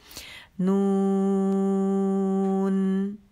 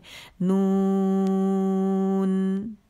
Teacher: नून, कैसे? नून, यानी नून की आवाज़ थोड़ी देर चलेगी 1 काउंट के लिए